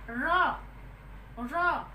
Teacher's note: जब आप उच्चारण करेंगे तो हमारी जीभ जो है वो पीछे की ओर मुड़ जाती है, यानी कि तालव्य स्थान से होती हुई हमारे पीछे की ओर मुड़ जाती है। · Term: लुंठित